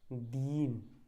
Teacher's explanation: इस पर बोलोगे दिन, मतलब दी पर ज़्यादा जोर नहीं दोगे, इसमें क्या बोलना पड़ेगा आपको, दीन। ठीक है, यानी कि ई को थोड़ा लंबे समय तक बोलना पड़ेगा, तो यही दीर्घता है।